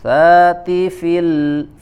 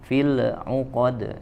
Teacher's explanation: diam dulu dalam atau di makhraj huruf lam, ya, tidak dipantulkan